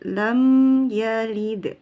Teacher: Jadi harus tidak boleh terputus dan tidak terlalu mengalir. Lam masukkan dulu ke hidung, kerongga hidung. Rasakan dulu ada dengungnya sedikit. Lam yalid. Jadi tidak buru-buru pindah ya.